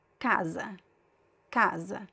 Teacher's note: first stressed second syllable unstressed. It's weaker. Kaz Mad. And then here we have a graphic accent.